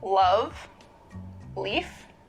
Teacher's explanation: One remarkable feature of this variety is a light L, the sound that you would find in a word like, love, leaf. Right, so New York Latino English speakers have a particularly light L.